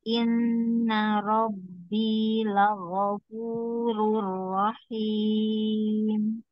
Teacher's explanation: Golnya jangan panjang, lagofu yang panjang fu-nya aja ya.